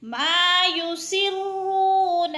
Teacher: رو پہ وہ مدہ ہے، دو حرکات کے برابر رو کو کھینچ کر پڑھنا ہے۔